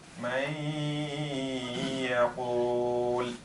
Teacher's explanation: the noon goes into the ya, and I spend time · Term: al-idgham bil-ghunna